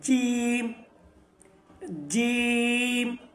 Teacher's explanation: জিহ্বার মধ্যখান থেকে এবং তার বরাবর উপরের তালুর সঙ্গে লাগানোর পর জিম উচ্চারণ হবে।